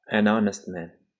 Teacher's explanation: Demak, honest so'zida xuddi shu singari bu yerda ham h harfi o'qilmaydi. H o'qilmaganligi uchun honest bo'lib ketyapti.